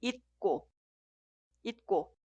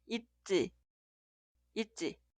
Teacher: la consonante inicial en la sílaba posterior suena como sonido forzado. Por eso, la primera frase se escribe así, pero suena 있고, 있고.